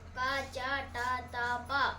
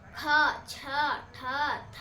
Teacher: ಕಡಿಮೆ ಉಸಿರಿನಿಂದ ಹೇಳುವ ಅಕ್ಷರಗಳು ಏನಂತ ಕರೀತೀವಿ ಅಲ್ಪಪ್ರಾಣ